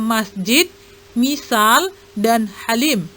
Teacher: Yang kedua adalah mim. Makhrajnya pada kedua bibir luar. Bunyinya seperti huruf mim pada kata masjid, misal, dan halim.